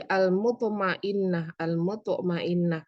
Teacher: Qalqalah sugro karena ada huruf qalqalah yaitu tok yang sukun asli. Al-mutmainnah disebut sugro karena dia ada di tengah. Jadi pemantulannya tidak sekuat kalau tok ini berada di akhir.